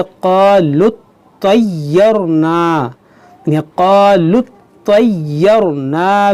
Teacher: तौ मुशद्दद है, या मुशद्दद है, इसको आप इस दोनों हर्फ को 2-2 बार पढ़ें